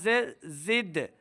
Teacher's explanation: دال حرف قلقلہ سے ہے، دال کے اوپر قلقلہ ظاہر کریں گے